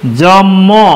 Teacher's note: এই যে জন্ম দন্ত ন এর সাথে ম ছিল, এটি পরিবর্তিত হয়ে ম আর ম এক হয়ে গেল। এই এক হওয়াটি মূলত সমীভবন।